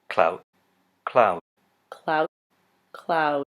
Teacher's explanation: the diphthongs in clout will be higher than the diphthong in cloud. The diphthong in cloud is closer to how most Americans would pronounce it. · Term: Canadian raising